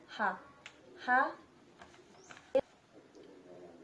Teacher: Place of articulation glottal and manner of articulation fricative